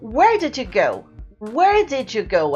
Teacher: A gente percebe que o where é bem forte. O go também tem o seu stress. Mas lá no meio eles quase desaparecem.